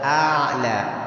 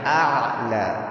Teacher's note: Huruf ainnya dari tengah tenggorokan.